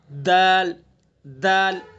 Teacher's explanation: दाल का मखरज वही है जो ता का है, ऊपर आपने जो ता का पढ़ा है, जबान की नोक और सना उलिया की जड़।